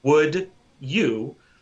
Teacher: it's an example of assimilation in a sort of way it's a combination of the the D and the Y